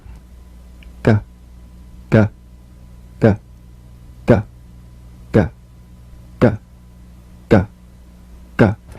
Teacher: The voiced tongue back plosive consonant G. Place the back of the tongue in gentle contact with the soft palate.